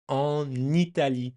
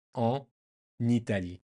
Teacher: And en Italie, the N from en makes a nice little connection with the first vowel